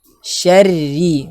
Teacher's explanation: Kalau masuk ke huruf ra tasydid kasrah, ra-nya juga dibaca tipis.